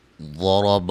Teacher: ضاد کو را کو موٹا ادا کریں گے · لفظ اللہ کے لام کو موٹا ادا کریں گے، اس سے پہلے حرف پر زبر ہے